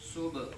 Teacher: سبحانک اللہم سین کو اوپر پیش ہے, سین کو با کے ساتھ ملا کے پڑھیں گے, با ساکن ہے, سین با پیش صبح, صبح با ساکن میں قلقلہ کریں گے, حرف قلقلہ میں سے ہے با ساکن